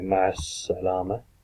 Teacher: The as-salama is ma'a al-salama, but everyone says ma'as salama. So you actually could take the L out and just say ma'as salama. The more formal way of doing it would be al-salama.